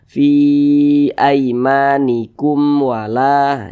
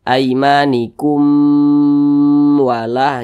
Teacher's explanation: syafawi ya kalau ada berjumpa dengan huruf mim sukun nah begitu karena dia izhar maka dibaca jelas jadi dibaca pendek saja Fi aimanikum wala Jangan dibaca aimanikum wala jangan dipanjangkan seperti itu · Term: izhar syafawi